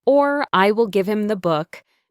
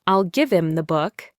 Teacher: The H just disappears.